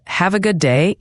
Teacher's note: d at the end of good is often very light, almost swallowed, especially before another consonant like day